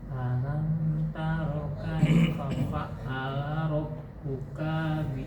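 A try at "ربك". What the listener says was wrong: Kanya pendek. Rabbuka bi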